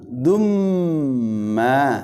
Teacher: Kemudian abidum, dumma, tanwin dhamma bersemu dengan huruf mim, ya, itu adalah idgham biguna, ya. Jadi dibaca dengung, dumma, begitu ma tahan 2 harakat.